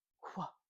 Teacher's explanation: the first part is unvoiced and the last part is voiced